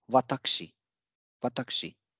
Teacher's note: since k and sh are unvoiced consonants and u is appearing in between them, so this rule one states that this u will get devoiced. So watakushi becomes watakshi, watakshi.